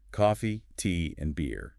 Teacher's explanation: When we list things, our voice usually rises on each item. Coffee until the very last one where it falls to signal the end.